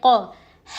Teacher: قوف زبان کی جڑ کو چھوٹی زبان کے پیچھے کے حصے سے لگانے پر ادا ہوتا ہے. قوف پر زبر ہے نہیں کھینچیں گے.